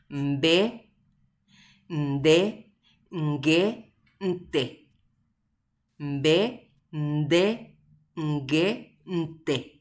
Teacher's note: Upéa he'isehína que un poco del sonido sale por la nariz y un poco del sonido sale por la boca